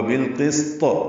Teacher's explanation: سین ساکن پہ ہمس طا پر وقفاً قلقلہ ہوگا